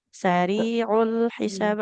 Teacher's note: Kemudian sama ainnya sari'ul hisab. Ainnya jangan jadi hamzah ya.